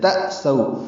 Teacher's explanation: حمزہ ساکن جھٹکے سے ادا کرتے ہیں، سو و لین ہے، ہونٹوں کو تمام بول کریں گے.